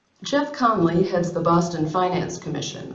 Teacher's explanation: she's telling you that the word finance is important but she's also telling you the word Boston is not important Boston is already part of the discourse it's already been introduced